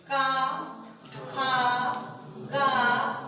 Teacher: का, खा, कितना प्रेशर पड़ रहा है, का पढ़ रहा है कि नहीं पढ़ रहा, ठीक है। तो जो ये का वर्ग है ये हमारा कहां से बोला जाएगा, कंठ से बोला जाएगा